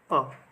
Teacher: अ को मध्य स्वर कहा जाता है क्योंकि इसका उच्चारण जीभ के मध्य भाग से होता है